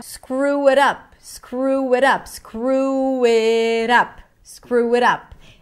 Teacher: a back vowel with a schwa